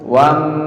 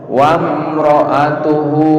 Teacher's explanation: mimnya nggak boleh dibaca dengung. Wam, salah, dimatikan aja mimnya.